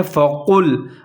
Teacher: یہاں پر قاف کو موٹا پڑھنا ہے ، فَقُل، اور لام کا خیال رکھنا ہے، اس کو باریک